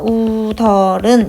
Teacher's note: 교체가 일어납니다. 웃어른으로 시옷이 디귿이 되는 교체가 한번 일어나고요. 뒤는 자연스럽게 연음이 됩니다. 그래서 우덜은 이런 식으로 발음이 됩니다.